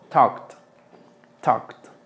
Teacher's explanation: aquí la L no suena tampoco. Talked. Y la A suena como O.